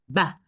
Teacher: puts the the lips together and then it opens them. But when I say ca you cannot say whether I have said ha or ca. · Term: bilabial